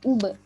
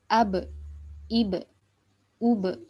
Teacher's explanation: U-nya monyong karena domah, nanti be-nya balik lagi ke makhraj asalnya ba. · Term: memantul